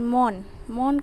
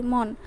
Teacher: মন নর সাথে কিন্তু আমরা অ যুক্ত করছি না, মন নো এরম বলি না, মন বলি শুধু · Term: বদ্ধাক্ষর